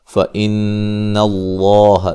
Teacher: نون مشدد پہ غنہ ضروری ہے. لفظ اللہ کو موٹا ادا کریں گے، پہلے زبر ہے، مد اصلی ہے.